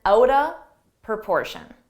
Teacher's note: Out of, you can reduce those into one sound, outa. Don't blow is comment, outa proportion.